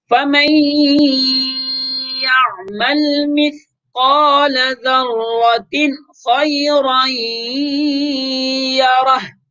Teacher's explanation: ہم غنہ نہیں کر رہے تھے، چونکہ ذرۃن میں تنوین کے بعد حروف حلقے میں سے خا ہے، اس وجہ خا کی وجہ سے ہم غنہ چھوڑ رہے تھے.